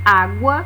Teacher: A vogal é a base da sílaba e a semivogal é pronunciada de maneira mais fraca. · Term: ditongos